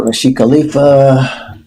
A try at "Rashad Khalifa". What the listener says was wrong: It's Rashad Khalifa, not Rashid.